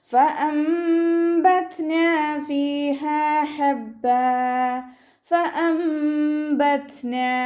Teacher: ഹംസയുടെ മഖ്റജ് അക്സൽ ഹൽക്കാണ്. സൗണ്ടിന് വ്യക്തമാക്കി കൊടുക്കുക. ഇവിടെ നൂൻ സാക്കിനയുടെയും തെൻവീനിൻ്റെയും നിയമമായിട്ടുള്ള ഇഖ്ലാബാണ് വരുന്നത്.